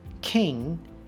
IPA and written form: kɪŋ (King)